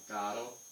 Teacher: Italian, if the R is between two vowels, it's just a flip.